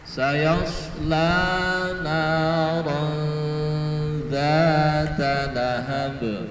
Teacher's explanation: di ayat sayasla naran dzata lahab itu ada 3 bacaan, semuanya bacaan panjang, semuanya adalah bacaan mat tabi'i, ya. 1 sayasla, kemudian na, kemudian dzata.